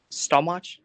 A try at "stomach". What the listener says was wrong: Oh, well, no, it's stomach with a K sound. Yeah, even though it has CH, we pronounce it with a K, okay?